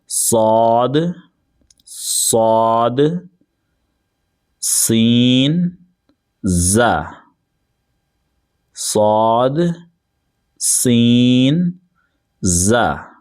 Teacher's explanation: زبان کی نوک اور دونوں دانتوں کے اندرونی کنارے سے ادا ہوتے ہیں. اس میں آپ کے دونوں دانت استعمال ہوں گے، اوپر والے بھی اور نیچے والے بھی. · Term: سینٹی والے حروف